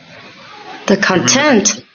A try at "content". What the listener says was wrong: Yeah, content. Content. So, what you said was more like contact, which is different. It should be content.